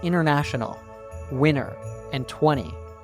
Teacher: when we have an N and T together, we drop the T sound, like in international, winner, and 20.